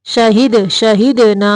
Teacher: دال کو قلقلہ کرنا ہے، حرکت دینی ہے